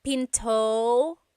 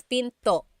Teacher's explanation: don't forget to stop the sound at the end that's called a glottal stop